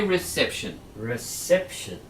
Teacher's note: we say reception on the second syllable